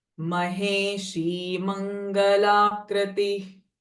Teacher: Ideally, the visarga sound is just the release of breath